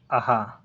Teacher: अ भी कंठ से बोला जाता है और हा भी कंठ से बोला जाता है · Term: कंठी व्यंजन